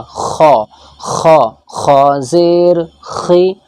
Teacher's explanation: گلا جب ہمارا بیٹھ جاتا ہے، خراش ہو جاتی ہے تو ہم اس طریقے سے کرتے ہیں، تو یہ خا یہیں سے ہی نکلتا ہے